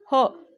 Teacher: आपल्या तोंडातली हवा म्हणताना एकदम जोरात बाहेर जाते फुफासातली हवा तोंडावर वाटते एकदम जोरात बाहेर जाते तेव्हा त्याला महाप्राण